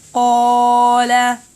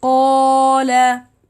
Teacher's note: the letter قا, it needs 2 حركة because it is a mad, and the 1 حركة for lam. So it will be قال.